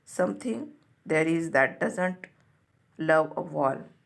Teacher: the poems first line begins with a troche before settling into an iambic rhythm